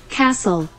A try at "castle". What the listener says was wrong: 그러면 내가 castle 소리 나면 어떤 글자가 소리가 안 나는 것 같은데? 그래서 T가 소리가 안 나죠. 캐스틀이 아니고 캐슬.